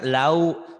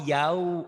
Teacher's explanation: Kalau yang bunyi A jangan di O kan.